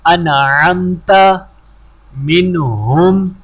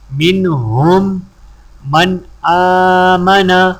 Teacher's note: نون ساکن یا تنوین کے بعد اگر کوئی حروف ہلکی یعنی حمزہ، ہا، عین، حا، غین، خا ہو تو نون ساکن ظاہر کر کے بغیر غنہ کے پڑھیں گے، خواہ یہ صورت ایک کلمے میں ہو یا دو میں، جیسے انعمت، نون کے بعد حروف ہلکی عین ہے اس لیے نون پر غنہ نہیں کیا جائے گا۔ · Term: اظہار